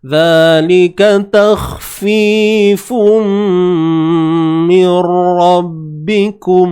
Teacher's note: Fun jadi fum masuk secara sempurna. Bi gunnah dengan dengung dua harakat kadarnya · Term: idgham bi gunnah